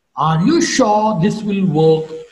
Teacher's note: work is to be marked with a rising point